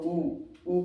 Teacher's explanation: ऊ कहोगे तो होठ जो है गोलाकार बन रहा है, तो ये क्या हो गया, ये ओष्ठ हो गया।